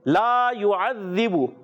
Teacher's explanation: حرف مدہ لا کو ایک الف ضرور کھینچنا ہے، ضرور کھینچنا ہے.